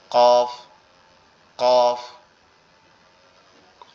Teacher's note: কফটা হচ্ছে আমাদের জিহ্বার গোড়া। এই যে জিহ্বার যে গোড়ার অংশটা গালের এইখানে যে লেগে আছে, এই গোড়াটা উপরের তালুর সঙ্গে লাগবে।